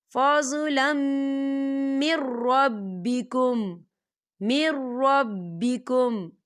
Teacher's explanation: ادغام ہوگا لیکن اسے بنا غننے کے پڑھیں گے، یہاں غنہ بالکل نہیں کریں گے